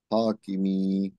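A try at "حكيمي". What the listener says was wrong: একটা কি, এটা টান হবে, হাকিমি।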